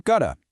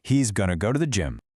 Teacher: the t in to is now between two vowel sounds. So it becomes a flap t.